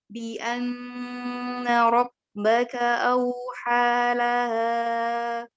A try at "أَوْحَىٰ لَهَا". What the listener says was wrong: أوحى لها ها فقط بدون مد، bukan مد.